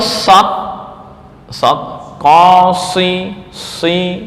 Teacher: menutup pada langit-langit ya artinya kembang suara di mulut itu penuh